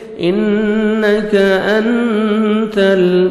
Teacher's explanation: इन्नका अंतल इख्फा करेंगे, नून साकिन के बाद ता आ रहे हैं 15 लेटर्स में से नोज में साउंड लेके जाएंगे, ता को बारीक पढ़ेंगे, लाम को अपने हिलाना नहीं है, आइन को अपने सही मखरज से पढ़ेंगे, या मद्दा 1 सेकंड लाम को खींचेंगे।